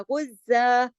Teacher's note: 2 जबर की जो तनवीन है उसको एक जबर और एक अलिफ के साथ पढ़ा। तनवीन की ये जब ऐसी हालत होती है 2 जबर की तनवीन पर अगर हम सुकून आरजी सुकून करते हैं, तो उसमें ये बदलाव आता है कि फिर वो एक अलिफ और एक जबर के साथ पढ़ी जाती है, जैसे औ कानू गुज़्ज़ा, ये वक्स की सूरत में है।